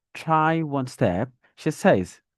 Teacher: You can see that the falling tone is at the end of says, not at step. At step, there's a dragging and elongation, and there's a rising tone there.